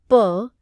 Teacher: आप प या त का उच्चारण करेंगे तो पता चलेगा कि प के उच्चारण के समय निचला ओठ ऊपर उठकर ऊपर के ओठ को स्पर्श करता है और मुख से बाहर निकलने वाली वायु का रास्ता पूरी तरह रोक देता है बाद में जब ओठ नीचे आता है तब वायु बाहर निकलती